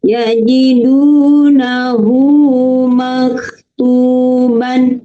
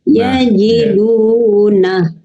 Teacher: ketika bacanya diwasol atau disambung maka dibaca panjang dua harakat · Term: Mad sillah qasirah